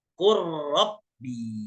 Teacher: Jangan lagi dibaca qul rabbi, tapi ro-nya langsung bertasydid. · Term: idgham mutajanisain